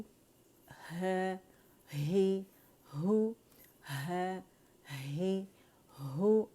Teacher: اقص الحلق جہاں سے حمزہ اور ہاں دونوں ادا ہوتے ہیں